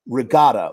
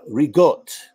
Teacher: final syllables are deleted